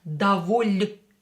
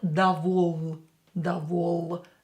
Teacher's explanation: Here we have мягкий знак, so L letter should be more softer. Доволь, not довол, довол.